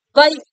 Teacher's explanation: வை அப்படின்னா ரெண்டு வாட்டி சொடக்கு போடுற டைம் ஒழிக்கும்